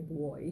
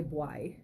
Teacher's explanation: In Jamaican you might say boy, a little more like an O sound. In Belize we more make an A sound. So I might write that B-W-A-Y.